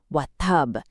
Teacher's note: You press your lips together hard and release them with a dramatic, clear pop. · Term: strongest qalqala